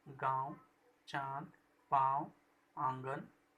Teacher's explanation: इसका उच्चारण नाक और गले दोनों से होता है। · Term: अनुनासिक